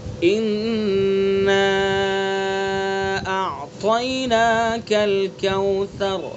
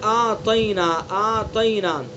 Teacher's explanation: حمزہ اور عین دونوں کو الگ الگ صاف ظاہر کر کے پڑھنا ہے.